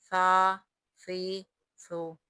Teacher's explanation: مخرج زبان کی نوک اور ثنایا اولیاء کا کنارہ، یہاں سے سا ادا ہوتا ہے، یہ نرمی سے ادا ہوگا، سا زبر سا، سا زیر سی، سا پیش سو، سا سی سو۔